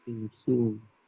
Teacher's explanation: Tidak boleh insu, sunya dibaca pendek ya.